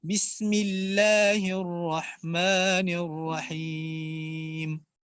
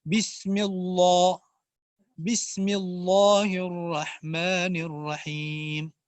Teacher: بسم اللہ میں اس لفظ الجلالہ کو باریک پڑھنا ہے، آپ اس کو اگر موٹا کر کے پڑھیں گے تو یہ لحن خفی کی صورت ہے